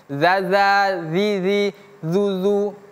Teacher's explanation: Cara mengucapkan huruf dzal, ujung lidah kita bertemu dengan gigi seri atas.